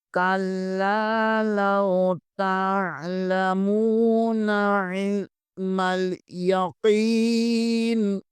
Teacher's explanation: زیر نی، علم الیقینی، قاف زیر کے بعد یا مدہ ہے، اسے ایک الف کے برابر کھینچیں گے اور نون کو وقف کی صورت میں ساکن کر دیں گے ، کلا لو تعلمون علم الیقین، قاف کو موٹا پڑھیں گے،